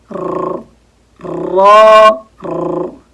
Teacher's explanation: सबसे पहले र में तकरार करते हैं ज्यादा